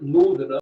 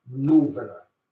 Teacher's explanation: he uses V on the TH